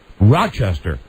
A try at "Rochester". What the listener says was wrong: you don't you don't pronounce the s in it